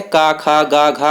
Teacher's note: कंठ से बोले जाते हैं